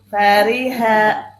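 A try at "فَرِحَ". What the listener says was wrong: Kasrohnya kurang, itmamnya. Nah, gitu.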